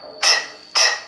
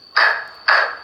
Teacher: with the t sound, you block the airflow near the back of your front teeth. In the k sound, you block the airflow at the back of your mouth.